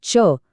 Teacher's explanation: तालव्य म्हणजे टाळूला जीभ लावून